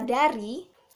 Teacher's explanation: huruf D itu hidup, oral, termasuk apikodental, dan termasuk plosif